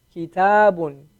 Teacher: Notice the kaf, one vowel sound, right? Ki, right? The elongation is only on the ta.